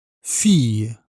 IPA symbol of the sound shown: ij